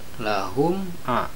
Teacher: Na mantobi'i lahum a, ini adalah idhar syafawi karena ada mim mati menghadapi huruf ain, membacanya huruf mimnya harus jelas tidak boleh dengung